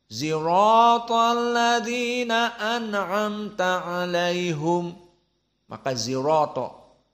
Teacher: bukan sirato dengan shod tapi dengan zaai